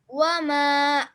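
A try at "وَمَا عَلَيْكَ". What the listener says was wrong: अलैका का आपने थोड़ा ज्यादा कर दिया। अलैका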